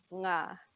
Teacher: for the ngā, your tongue should be right at the back, going up, touching the back of your mouth. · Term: NG consonant blend